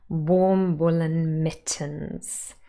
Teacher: It should be stressed, but we're not going to stress it. We're going to put the main stress on warm and not on woolen, and then on mittens, first syllable.